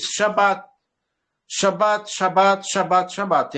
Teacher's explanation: Você nunca vai pronunciar B duas vezes. Você vai falar uma vez